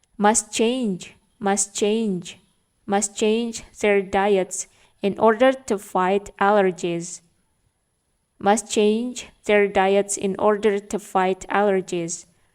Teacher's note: Huruf T-nya di kata must ini tidak dibaca. Must change their diets in order to fight allergies.